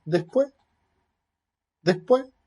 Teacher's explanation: con una aspirada en la sílaba des y con una elisión en la sílaba pues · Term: aspiración de S